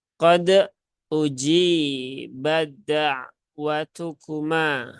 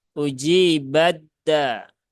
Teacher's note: keduanya itu keluar dari ujung lidah pangkal gigi seri atas atau ujung lidah gusi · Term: pertemuan mutajanisain